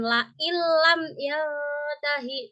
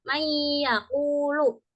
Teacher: antara nun dan lam itu tidak dibaca berdengung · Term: idgam bilahuna